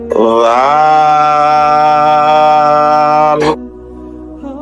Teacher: নরম হবে, জিহ্বার আগা উপরের দাঁতের আগায় লাগবে। লাল র হরফটি জিহ্বার আগার পিঠ উপরের তালুতে লাগবে, মোটা হবে, বাংলা আকার প্রকাশ পাবে না।